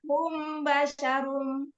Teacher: Cara bacanya yang paling bagus adalah ada unsur ikhfanya ya. Melembutkan bacaan mim sukun, ada unsur ikhfanya jadi sedikit ngambang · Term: Ikhfa Syafawi